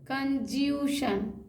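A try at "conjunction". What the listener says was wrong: कंजूसन। कंजूसन। एन कहाँ आपने पढ़ा? सी भी नहीं पढ़ा आपने? हाँ कंजंक, कन जंक। का भी पढ़ना है, का भी पढ़ना है कंजंक्शन। कंजंक्शन।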